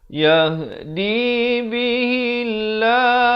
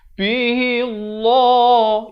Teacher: Dibacakan lafz jalalah ini dengan nipis, dua harakat. Jangan baca bihillah, itu tebal, jadi salah, ya.